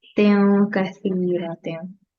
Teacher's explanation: And also here, because it's tanween, we haven't covered this rule yet, but this is the rule of ikhfa here. After tanween, if we have letter kaf, this is one of the ikhfa letters, so which means you need to conceal the sound of noon at the end of tanween.